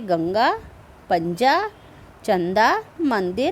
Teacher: अब सबसे पहले आप जानिए अनुस्वार। इनके उच्चारण में हवा केवल नाक से निकलती है, इसका उच्चारण अधिक जोर से होता है।